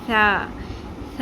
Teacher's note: Next ہے ثا، ثا کو نرمی سے ادا کرتے ہیں. سین کی طرح سیٹی کی آواز نہیں آنی چاہیے. زبان کی نوک جو ہے اوپر والے 2 دانتوں کے کناروں سے ٹکراتی ہے اور تھوڑا سا ہلکا سا اگر باہر نکال دیں تو نرمی اچھے سے آ جائے گی.